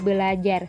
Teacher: pembentukan ber tambah ajar yang seharusnya menjadi berajar namun di sini bunyi R pertama didisimilasikan dengan bunyi l sehingga menjadi belajar